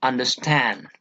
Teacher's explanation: four is anna best two unstressed syllable plus one stressed syllable first two syllables are unstressed and the third syllable is given importance or stress · we give importance to the last one only stand okay and these two syllables are not given importance such kind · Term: anapest